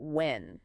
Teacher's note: When, referring to time, ends with an N, a soft nasal sound that hums in your nose